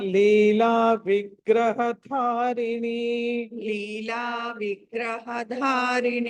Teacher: ఇక్కడ ధ మహాప్రాణం ఒత్తి పలకాలి